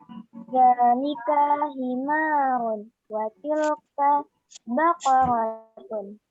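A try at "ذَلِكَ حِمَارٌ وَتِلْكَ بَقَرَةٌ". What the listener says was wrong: Nah, Baqaratun. Ya, betul.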